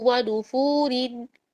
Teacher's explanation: تجوید کے لحاظ سے فا کا جو پیش ہے وہ را کو موٹا کر دے گا. اب اگر میں اس کا وقف ہٹا دوں، یعنی کہ سمجھ لے کہ آیت ختم نہیں ہو رہی، تو پھر میں اس کو بولوں گی ونفورن.